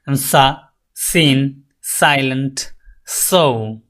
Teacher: Alveolar sound কি আমরা দেখে আসছি, দন্তমূলীয় সা। হ্যাঁ, the টাং touches the alveolar রিচ, আপনার জিহ্বা উপরের দাঁতের গোড়ালির ভিতরের দিকের যে গোড়ালিটা রয়েছে সেখানে টাচ করবে।